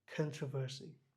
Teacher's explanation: এখানে আরটা খুব ভালোভাবে উচ্চারণ হয় না